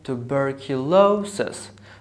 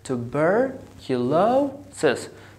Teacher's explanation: So bur, this syllable has secondary stress. And lo has the primary stress. So we have something like a comma, this is the sign for the secondary stress, as we see here.